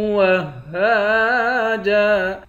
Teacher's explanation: ہا کو ایک الف کی مقدار کھینچ کر پڑھیں گے